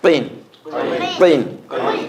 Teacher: Qaf has a click in the back of it. It's more prominent when you use a kasra with the qaf.